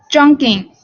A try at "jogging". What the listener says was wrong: so you're kind of putting in an N sound. You're saying jogging. So it's jogging.